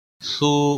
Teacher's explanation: او واو مدہ ہے، سو واو مدہ ہے، دونوں کو 1 1 الف کے برابر کھینچ کر پڑھیں گے۔